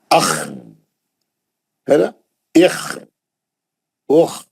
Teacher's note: خا اور غین کہاں سے نکلتے, اوپری حلق سے نکلتے. موٹا آواز ہے اس کا, ہے نا, موٹا آواز آتا.